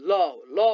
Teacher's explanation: सास बाहिर गई उच्चारित हुने वर्णलाई पार्श्विक वर्ण भनिन्छ पार्श्विक वर्ण ल उच्चारण गर्नुस् त जिब्राको दुवै छेउबाट श्वास बाहिर आउँछ